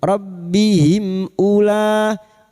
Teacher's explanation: Karena sekarang kita wasal atau terus, maka mim sukun bertemu hamzah idhar safawi. Mim sukun dibaca jelas tanpa mendengung. Rabbihim ula bertemunya mad dengan hamzah dalam satu kalimat mad wajib mutasil.